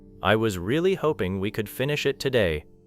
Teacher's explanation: The strong information might be, really, finish, today. Even if some small sounds blur together, the meaning stays visible.